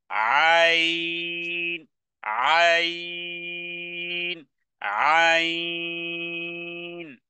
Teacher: মুখের সাথে সম্পর্ক নেই, গলা থেকে আপনাকে আওয়াজ বের করতে হবে।